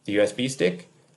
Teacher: But because of the intonation, the rising intonation on stick, the USB stick, that intonation helps A see that B is asking a question. It's not grammatically an interrogative.